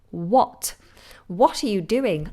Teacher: if you're new to this word, the H is silent. We just do w.